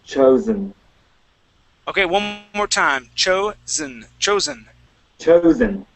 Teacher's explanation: An S or a unvoiced S sound. This would be chosen. It has a Z sound there. It's the voiced.